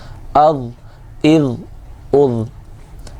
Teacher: حمزہ ضا زبر از، حمزہ ضا زیر اغ، حمزہ ضا پیش اغ، ضا ہے حروف مستعلیہ میں سے ہے، موٹا پڑا جائے گا اور بغیر سیٹی والے حروف میں سے ہے، اس لیے سیٹی نہیں آنی چاہیے